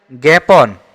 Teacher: জ্ঞাপন শব্দটিতে আ উচ্চারণ হচ্ছে না এ উচ্চারণ হচ্ছে